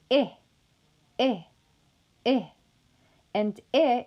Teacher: that is why it is also classified as a high vowel the jaw is in a fairly close position during production of e and the lips are going to be unrounded · the body of the tongue is only slightly lower in production when compared to E. That is why it is also classified as a high vowel.